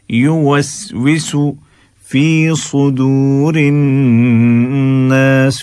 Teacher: یو صرف پیش ہے واو کی آواز اس میں نہ آئے